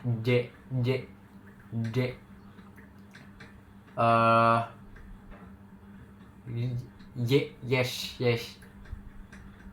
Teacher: Eh, tau palatal. Bunyi ini tuh bunyi yang dihasilkan ketika lidah mendekati atau hampir menyentuh langit-langit keras.